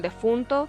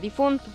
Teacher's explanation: se manifiesta la inestabilidad de las vocales átonas